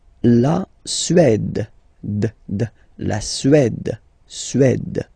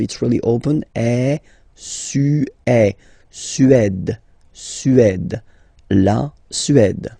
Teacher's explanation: Remember, accent grave, it's really open.